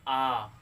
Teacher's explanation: जैसे बोलेंगे आ तो पूरा मुंह खुलता है, इससे ज़्यादा टाइम ले रहा है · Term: दीर्घ स्वर